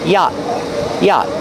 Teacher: The T is a stop T at the end after the vowel.